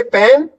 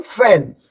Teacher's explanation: पी दोनों होठों से बीच के निकलता है और एफ जो है एक दांत और एक होठ से मिलके निकलता है